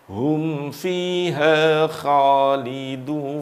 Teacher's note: Jadi lidah bagian belakang naik. Karena lidah bagian belakang ini naik, maka huruf kha ini bersifat tebal.